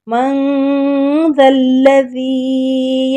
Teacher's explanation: ذال کو نرمی سے پڑھنا ہے، زبان کی نوک اوپر والے دو دانتوں کے سرے سے ہلکی سے لگا کے یہ لفظ ادا ہوتے ہیں